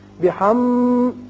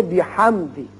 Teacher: آپ پڑھ چکے ہیں یہ قاعدہ میم ساکن کا، اس کے اظہار کا، کہ اگر میم اور با کے علاوہ باقی 26 حروف میں سے کوئی بھی میم ساکن کے بعد آ جائے تو یہاں میم پر اظہار ہوتا ہے. بحم یہ لمبا نہیں کریں گے بلکہ بحمدی میم کا اظہار ہوگا